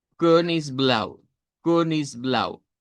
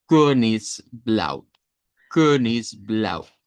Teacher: Es la e del español pero con redondez. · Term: e redonda